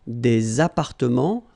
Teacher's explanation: Remember, final S and final T are not pronounced here.